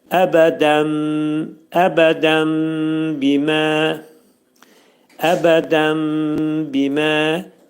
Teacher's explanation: Dəndəki bu nun səsi, nun səsi bəyə dəyir və burda iqlab baş verir. Yəni mim hərfinə çevrilir. Ona görə biz mim hərfini dedikdə burda ağız yumulur təxminən iki saniyə müddətində.